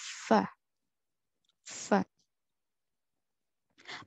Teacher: فا اس کا مخرج یہ ہے کہ اگلے دانت یعنی اوپر کے دانت نیچے والے ہونٹ کو لگنے سے ادا ہوتا ہے،